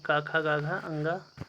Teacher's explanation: का की जो लाइन होगी का खा गा घा अंगा, वह कंठ वर्ण के अंतर्गत आती है